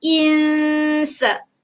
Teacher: Sa adalah huruf yang saya beritahu tadi, sebutan huruf ikhfa tadi tu. Okey, kita jangan tebalkan sebab sa tu adalah huruf istifal, huruf nipis.